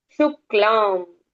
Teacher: शुक्लाम यहां पर शुद्ध आधा क और ला है।